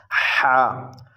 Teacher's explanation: ہا حلق کے درمیان والے حصے سے ادا ہوتا ہے